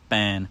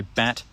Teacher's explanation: When I say ban, it comes way out of my nose, and then I say bat, it's normal. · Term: nasalization of vowels